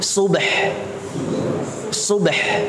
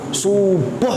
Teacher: Baknya kita sukunkan, haknya kita sukunkan. Harusnya dibaca subh.